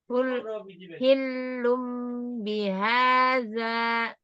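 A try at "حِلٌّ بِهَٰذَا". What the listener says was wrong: Tambah lagi lama dengungnya.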